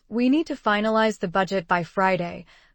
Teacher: The stressed words are need, finalize, budget, Friday. You don't need we, to, the, by to get the gist.